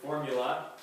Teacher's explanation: stress on the first syllable three syllables